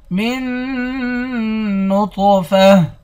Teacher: من نطفہ میم کو نون کے ساتھ ملا کر پڑھیں گے، نون پر غنہ کریں گے، طا کو موٹا پڑھیں گے۔ طا حروف مستعلیہ یعنی موٹے حروف میں سے بھی ہے اور طا حروف قلقلہ میں سے بھی ہے، یہاں اس کو موٹا بھی کریں گے اور قلقلہ بھی کریں گے۔